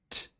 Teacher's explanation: The tip of the tongue going to the gum ridge. Air releasing T.